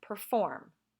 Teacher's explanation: it's the second syllable that we tend to stress